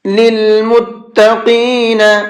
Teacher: یہ بڑا قاف ہے، اس کو منہ بھر کے پڑھیں گے